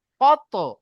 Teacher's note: ত হুরুফে কলকলা, তাই তকে কলকলা করে আগের অক্ষরের সাথে মিলিয়ে পড়তে হবে।